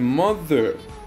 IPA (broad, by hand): ˈmʌðər